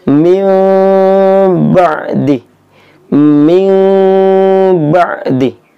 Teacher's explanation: nun mati bertemu dengan ba itu tidak, bibirnya tidak rapat, tidak ditutup rapat-rapat, dan tidak dibuka lebar-lebar. Intinya ada ruang renggang sedikit.